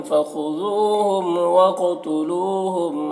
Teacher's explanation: ہم کے میم میں اظہار شفوی ہو رہا ہے۔